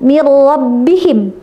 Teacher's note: Nah, itu r-nya terlalu kenceng itu takrirnya, ya. Jadi takrirnya jangan terlalu kenceng, jangan terlalu ketara · Tapi ro-nya getarnya disembunyikan